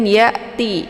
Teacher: Hamzah ini dibaca jelas ya, dan dia bacaannya adalah tipis ya, bukan ya ya. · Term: hamzah sukun